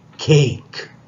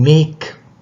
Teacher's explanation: And make. So cake, it comes initially, so you aspirate, and make is coming finally, so you do not aspirate.